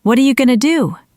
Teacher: Going to becomes gonna, a standard reduction. Do is a content word, so it stays clear.